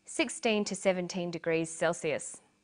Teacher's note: 17 degrees celsius these are both read out the same way notice that the 2 is unstressed